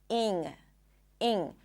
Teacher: some people might pronounce the /ɪ/ sound a little higher, so it's going to sound closer to an /i/ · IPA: /iŋ/